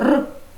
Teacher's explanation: звук р приголосний твердий дзвінкий